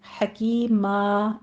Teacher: میم کی آواز ناک میں نہیں جانی چاہیے، حکیمہ ایسے سیدھی رکھنی ہے آواز